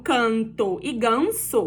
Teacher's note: O N você não fecha a sua boca, você não encosta um lábio no outro.